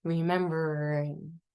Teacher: we're just going to whisper the ing at the end